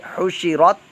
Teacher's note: ہے، تا ساکن ہے، حشرت، حشرت یہ قلقلہ بن جائے گا، تا کے اندر تو قلقلہ نہیں کرنا بلکہ حشرت آپ کی آواز ساکن ہو جائے، زبان جو ہے مخرج پر جا کر جم جائے